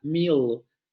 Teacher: meal se pronuncia al final con la proximante lateral oscura velarizada